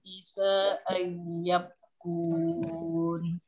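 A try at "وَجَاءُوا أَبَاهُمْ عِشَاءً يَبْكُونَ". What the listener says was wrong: Isanya panjang tuh.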